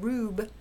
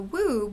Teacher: And then if you want to get from rube to woob, well, you have the liquidy R becoming the glidey W, and that will be due to gliding